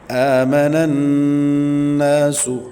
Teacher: حمزہ کے اوپر کھڑی حرکت میں کھڑی زبر ہے، 1.5 الف تک کھینچیں گے۔ نناس، نون مشدد کا غنہ ہے، یہاں پہ غنہ کریں گے اور نون کے بعد الف مدہ ہے، 1 الف تک کھینچیں گے۔